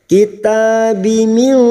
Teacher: Kitabi min, nun sukun bertemu shin ikfa hakiki. Kita samarkan bunyi nun sukun dan mendengung selama 3 harokat